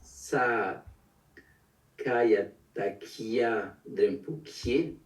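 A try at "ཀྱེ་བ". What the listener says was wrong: Ouais, bravo. Wa. À la fin, c'est wa. Kie wa. Sakataka yata kiadembu. Kie wa.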